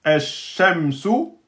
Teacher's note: Donc, on ne va pas le prononcer. On va prononcer directement le shin avec shidda.